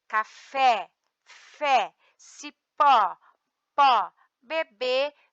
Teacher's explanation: De acordo com a posição da sílaba mais forte, classificamos como oxítonas. A sílaba tônica é a última.